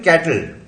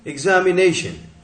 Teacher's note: ये टिल और शन, यहां पर ये सिलेबिक कॉन्टॉइड हैं, क्योंकि बिना वॉवेल के ये सिलेबल बना लेते हैं, जो कि मिनिमम आवश्यकता है वॉवेल के लिए, सिलेबल के लिए, कि बिना वॉवेल के सिलेबल नहीं बनेगा, मगर ये बिना वॉवेल के भी सिलेबल बना लेते हैं।